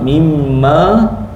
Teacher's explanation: mim sabdu wajibul gunah. Wajib dengung dua harakat.